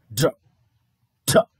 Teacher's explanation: the tongue is pressed against the gum ridge just above the front teeth